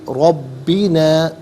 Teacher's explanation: ربی علیحدہ نا علیحدہ ملا کر پڑھیں گے، ربینا را پر زبر، را کو پر کر کے پڑھیں گے، با مشدد جماؤں کے ساتھ پڑھیں گے